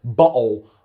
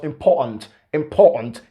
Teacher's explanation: one thing i want you to realize about the british english is they like to make use of the glottal stop meaning that when you have the t in a stressed syllable